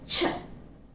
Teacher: notice that the tongue is touching firmly the hard palate okay it's raised against the heart palette and it's almost touching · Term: voiceless consonant